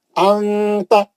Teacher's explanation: انتا، میں دیکھو میں چھپا دیا، میں نون کلین نہیں پڑھ رہا ہوں، میں کیا کر رہا ہوں، نون کی آواز کو چھپا کے غنہ پڑھ رہا ہوں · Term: اخفا